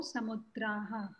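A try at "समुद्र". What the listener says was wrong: here what you have to remember is the shabdah here you will not say samudrah shabdah you will say samudra shabdah the visarga will not be there pratikatikam does not include visarga okay it will only be a vowel which ends typically for the topics we are learning now in the future we'll also learn you know conjugations but now we'll learn whatever words end with these primary vowels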